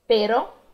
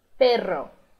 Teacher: O som dos dois R's vibra muito mais forte